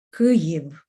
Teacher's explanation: the sound V at the very end doesn't really become F or doesn't get softened to an F, just because Ukrainian language is a phonetic language and tends to use the same sounds for the same letters throughout any place these letters appear in the word.